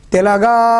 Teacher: ఇక్కడ తెలంగాణమున గడ్డిపోచయును సంధించెన్ కృపానమ్ము అని పాడినప్పుడు తెలగా తే లా తక్కువ అంటే ఒక మాత్ర కాలంలో పలుకుతున్నాం, తక్కువ సమయంలో పలుకుతున్నాం. గా అనేది ఎక్కువ సమయంలో పలుకుతున్నాం కాబట్టి లఘువు లఘువు గురువు